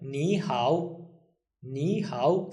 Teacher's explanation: we know that ni becomes second when we read it and third will stay the same · it's third tone, third tone. So it becomes second tone, third tone. Okay? So it will sound like nihow, nihow, second, third.